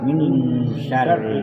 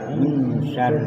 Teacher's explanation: এখানে একটা ওয়াজিব গুণা, মানে এটা হলো ইকফা গুণা, অস্পষ্ট করে পড়তে হবে।